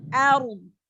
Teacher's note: Ro sukun, sebelumnya fathah, ro-nya dibaca tebal.